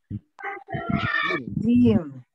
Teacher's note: tengah lidah bersentuhan dengan langit-langit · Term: huruf jim